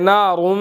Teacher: तो यहाँ पर आप देखें कि नारुम, रा को मोटा अदा करना है, मीम आगे मुशद्दद है, यहाँ पर हमने गुन्ना करना है